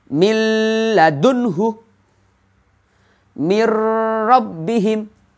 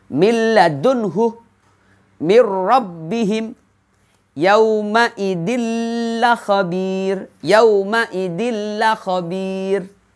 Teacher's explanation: seakan-akan huruf yang kedua itu terdapat tasydid, tetapi bacaannya tidak dengung. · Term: idgham bila gunnah